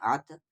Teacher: یہاں پر طا ساکن ہے یعنی قلقلہ ہوگا